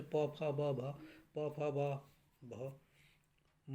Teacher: प वर्ग के जितने होते हैं सभी ओष्ठ से बोले जाते हैं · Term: ओष्ठ व्यंजन